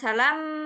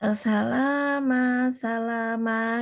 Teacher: Lamnya panjang dua harokat, kemudian mim. Tapi nggak ditahan mimnya, bukan salam gitu. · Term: mat tabi'i